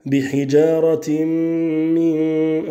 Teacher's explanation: On aura concernant les règles du nun sakin et du tanwin al-idgham pour ta parole bihijaratin min avec al-idgham l'assimilation du tanwin dans le mime qui vient juste après